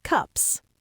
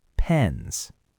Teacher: Cup ends in an unvoiced P, so the plural is an unvoiced S, and the vowel is short. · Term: vowel length rule